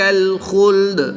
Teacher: وقف کی حالت میں دال کی زبر کو ساکن کر دیں گے۔ جب دال کی زبر کو ساکن کریں گے تو یہاں پر وقف کی حالت میں قلقلہ صغرا ہوگا، یعنی کہ قلقلہ کو خوب ظاہر کر کے پڑھیں گے۔